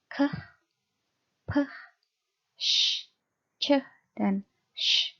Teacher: Jadi ketika Anda membacakan verb-verb ini, Anda membacakan bunyi-bunyi keh, peh, sh, ceh, sh, itu Anda pegang pita suara Anda tidak bergetar ya. Nah, jadi bunyi-bunyi keh, peh, sh, ceh, sh itu adalah bunyi-bunyi voiceless.